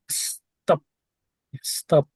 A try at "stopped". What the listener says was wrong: You said it. Don't tell me D. You pronounce T. Stop. Stopped.